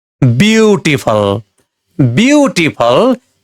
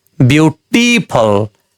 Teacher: बिउटिफल बिउटिफल तीन वटा सिलेबल भएको वर्ड हो। यसमा पहिलो सिलेबल बिउमा स्ट्रेस पर्छ।